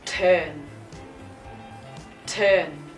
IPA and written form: tɜːn (turn)